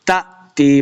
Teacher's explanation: تأتيهم جو حمزہ ساکن ہوتا ہے اس کو جھٹکے کے ساتھ پڑھیں گے